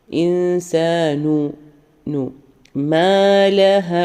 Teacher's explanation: കൃത്യമായിട്ട് വരരുത് ഇൻസാൻ എന്ന് പറയുന്നത് ഇൻസാൻ ആ രീതിയിൽ ഇൻസാനുമാലഹ നൂന് സുക്കൂന് നൂനിന് ളമ്മ വന്നുകൊണ്ട് ചുണ്ട് നന്നായി റൗണ്ട് ആക്കാം